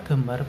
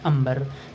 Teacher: Pada kata gambar berubah menjadi ambar, terjadi pelepasan fonem G